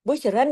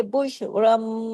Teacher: नून की आवाज खत्म हो गई, मीम की आवाज आएगी। बुश रन नहीं पढ़ेंगे, बुश रम, होना भी है बुश रम, क्योंकि मीम मीम आ गया ना आगे। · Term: इकलाब का कायदा